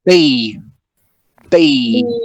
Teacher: english it is very tight right so now b b [Music] in english you need to feel this explosion right in your lips